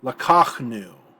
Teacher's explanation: Lakachnu, accented on the 2nd syllable.